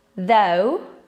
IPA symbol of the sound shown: ðəʊ